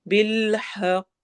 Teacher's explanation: कॉफ पे कलकला करते हुए स्टॉप करना है